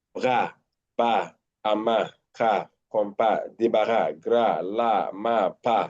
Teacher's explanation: They are short, posterior sound at the back.